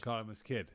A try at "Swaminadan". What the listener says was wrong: There's no H. You don't pronounce the H in my name. Swaminadan.